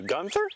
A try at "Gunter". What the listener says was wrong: It's Gunter, no H. Trust me, it's Gunter.